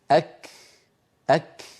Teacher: فيهما صفة الشدة في أولهما وهي انحباس الصوت، وفيهما صفة الهمس في آخرهما وهي جريان النفس